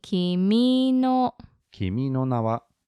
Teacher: So it goes up on mi.